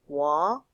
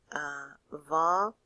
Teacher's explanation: va sometimes is pronounced as a W sound, so you may hear it pronounced wa